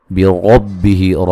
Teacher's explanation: را کو موٹا ادا کریں گے، ہی مد اصلی ہے۔